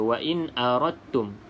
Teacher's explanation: Di mana tempat keluar huruf da dan ta, iaitu hujung lidah kena pada gusi depan tu, ataupun lelangit lah bahagian depan atas tu. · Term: makhraj yang sama